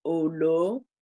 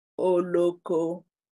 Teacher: So falling example, olo, rising example, oloko.